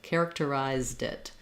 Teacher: it's easier to say the D because it kind of jumps onto the word it.